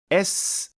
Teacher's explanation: S bu jarangsiz tovush. Ovoz paylari titramaydi. Bunda faqat havo oqimi bor.